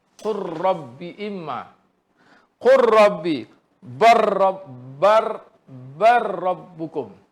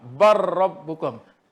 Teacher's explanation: Lam dan ra wajib diidghamkan idgham kamil.